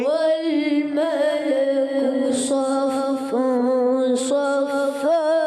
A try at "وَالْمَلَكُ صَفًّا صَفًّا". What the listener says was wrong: حرف مدہ کو جو ہم زیادہ نہیں کھینچیں گے, ایک الف کھینچیں گے. ٹھیک ہے, اس میں مد نہیں کریں گے.